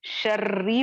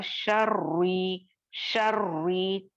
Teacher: मैं वहां पर रॉ को मुखफ्फम या मोटा पढ़ रही हूं, जो कि गलत हो जाएगा